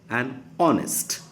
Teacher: H glottal sound is silent, and we tend to say like this honest, but we should say an honest.